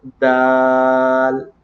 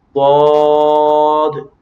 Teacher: یہ میں نے دال کو باریک پڑھا اور ضاد کو میں نے پر پڑھا